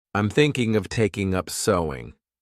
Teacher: Take up is our phrasal verb, and notice I pronounced it as one taking up because the preposition belongs to the verb.